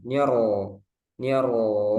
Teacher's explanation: Kemudian di ro, niro, niro itu langsung tebal ya roknya